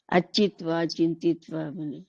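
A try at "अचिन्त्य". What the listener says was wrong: చింతయతి అని ఉందనుకోండి, అప్పుడు అచింతిత్వ అనకూడదు, అచింతిత్య వస్తుంది. అచింత్య వస్తుంది, సారీ అచింత్య. యా, త్వా పోయి త్యా వస్తుంది. త్య.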